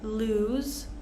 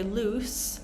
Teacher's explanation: make sure we don't say loose but lose so we have that z sound if we say loose it's a completely different word loose Sho